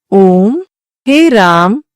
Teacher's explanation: जिन स्वरों का उच्चारण हृस्य स्वरों से 2 गुना समय में होता है उन्हें दीर्घ स्वर कहते हैं। प्लुत स्वर जिन स्वरों का उच्चारण करते समय हृस्य स्वरों से लगभग 3 गुना समय लगता है उन्हें प्लुत स्वर कहते हैं।